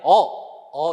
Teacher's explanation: 으보다 턱이 좀 더 내려와요 [음악] 턱이 좀 내려서 발음을 한다라는 거 기억을 하시면 되겠고요 아까